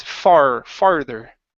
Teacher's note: get that R in there if not it sounds like you're saying father